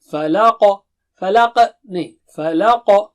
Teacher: فلق نہیں بولیں گے، فلق ایکسٹرا ساؤنڈ آئے گا. اور قاف جو ہے اونچا موٹا ہے، رائٹ. استعلا والا حرف ہے، بہت زیادہ اونچا موٹا نہیں.